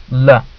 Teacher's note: where air escapes through the side of the tongue, however the tongue blocks the air from going through the middle of the mouth. Sounds like la. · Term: Lateral approximant